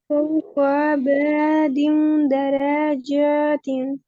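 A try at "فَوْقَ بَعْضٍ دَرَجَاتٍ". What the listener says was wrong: लंबा नहीं खींचेंगे हम, फौक दिन को भी लंबा नहीं खींचेंगे। और दरवा पे रा को भी लंबा नहीं खींचेंगे। लंबा किसी को ना खींचे।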